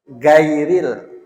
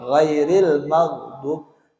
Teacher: Orang Bugis itu biasanya ghain jadi ga